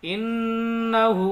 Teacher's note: नून में तशदीद गुन्ना करेंगे